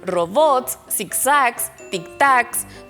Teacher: todas son palabras agudas porque suenan fuerte en la última sílaba